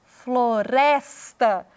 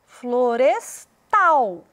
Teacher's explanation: Na palavra florestal, parece muito com a palavra floresta, mas a ênfase veio para o tal